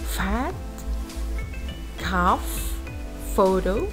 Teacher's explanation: these are sounds formed with the upper teeth and the lower lip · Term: labia dentals